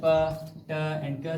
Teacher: after the release, we will experience some ha type sound, like there is small breathy sound, and that is the aspiration.